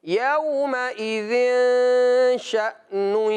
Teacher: تنوین کے بعد جب شین آئے تو وہاں پر اکفا کا قاعدہ لگتا ہے، اور جب اکفا ہو تو اس کا مطلب ہوتا ہے کہ غنہ کرنا ہے لیکن چھپا کر غنہ کرنا ہے